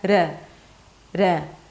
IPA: ɾ